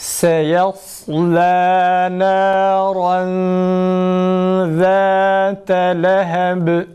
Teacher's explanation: Sad kalın, sin ince, lam yine ince okunması gerekir arkadaşlar. Bir de sadda acele etmeyelim.